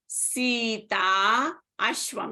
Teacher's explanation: Sita ends in a long ah ashwam starts in a short uh